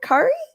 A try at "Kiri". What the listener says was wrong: You're adding an A.